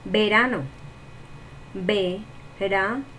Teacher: Y la sílaba tónica sería ra y sería una palabra grave.